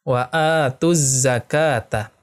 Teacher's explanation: Alif lam syamsiyah karena ada alif lam bertemu dengan huruf zain. Alif lamnya tidak dibaca, ya.